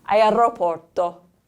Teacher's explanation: And if you've noticed when I've been talking and I say the letter R, there is a R sound to the letter R, a trill sound. So again, we don't use that in English, and you might want to start working on that R sound because that causes a lot of fatigue also in your mouth.